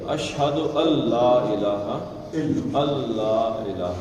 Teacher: نون نہیں پڑھتے۔ یرملون کا قاعدہ سیدھا لام میں مدغم ہو جائے، ادغام کر جائے گا۔